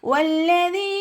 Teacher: ഉച്ചരിക്കുമ്പോൾ ചുണ്ടുകളെ ഒന്ന് സർക്കിൾ ചെയ്ത പിടിക്കുക പല്ലിനെ ചുണ്ടിൽ തട്ടിക്കരുത്